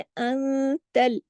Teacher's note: नून साकिन के बाद ता आया तो यहाँ इख्फा हुआ, इख्फा हकीकी, यहाँ पे गुन्ना कामिला हुआ, सेकंड लेवल का गुन्ना।